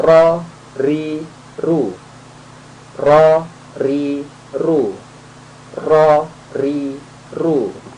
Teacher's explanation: ujung lidah mengenai gusi lah di atasnya gigi seri atas